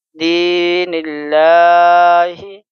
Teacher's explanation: اور یہاں زیر ہے تو بل اللہ، دال یا زیر دی، یا مدہ ہے اس لیے اس کو ہم ایک الف کے برابر کھینچیں گے